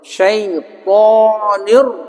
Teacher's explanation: ro di antara sifatnya adalah takrir, bergetar